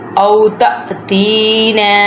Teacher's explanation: او تأتینا ہم نے جھٹکا لگایا کیونکہ حمزہ کے اوپر ساکن ہے، تو اس لیے جہاں پہ بھی آ جائے الف کے اوپر حمزہ کے اوپر تو وہاں پہ روک کے جھٹکا لگا کر پڑھتے ہیں۔